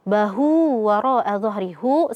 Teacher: ha damir yang berada di antara dua huruf yang berharakat. Maka di sini ee adalah mad silah qasirah